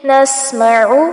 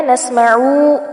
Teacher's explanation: یہاں پر عین کو لمبا نہیں کرنا، نسمعو ایسے نہیں پڑھنا.